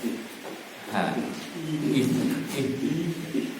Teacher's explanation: Ha itu tidak di dada. Jangan disalah ini ya. Bukan dari dada tapi di tenggorokan, tapi yang bawah. Ha. Jangan terlalu dibawa ke dada. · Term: huruf halqi